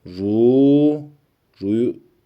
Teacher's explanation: ü sesiyle okumuyoruz ra harfi kalın olduğu için u sesi ile okunuyor